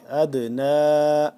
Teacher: نون کے اوپر کھڑا زبر اور مد ہونے کی وجہ سے ہم اس کو 2 سے 3 الف کے برابر لمبا کریں گے